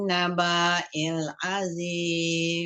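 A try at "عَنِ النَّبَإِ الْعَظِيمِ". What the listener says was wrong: nabailnya pendek nabailim selalu salah di situ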